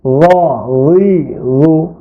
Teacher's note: র বলার সময় জিহ্বার আগা সামনের উপরের দুই দাঁতের আগার সঙ্গে লাগবে